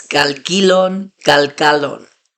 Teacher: The stress is on the last syllable, but I'm kind of emphasizing that middle syllable because it's the different vowel.